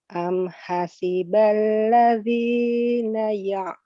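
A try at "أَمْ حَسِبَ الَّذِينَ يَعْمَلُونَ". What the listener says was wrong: Ya'maluna, bukan ya'lamu, ya'malu. Malu. Panjangnya 2 harokat ya, yang alladzina panjangnya 2 harokat.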